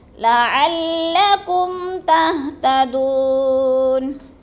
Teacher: لعلکم، میم ساکن کے بعد ہر تا آ گیا ہے تو ادھر غنہ نہیں کریں گے بلکہ اظہار شفوی ہے۔ تہتدون، دو پہ وہ مدہ ہے، وہ ساکن سے پہلے دال کے اوپر پیش ہے تو ادھر وہ مدہ کو ایک الف دو حرکات کے برابر ہم نے لمبا کر کے پڑھنا ہے